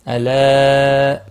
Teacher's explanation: مد منفصل ہے، 3 الف کے برابر کھینچ کر پڑھنا ہے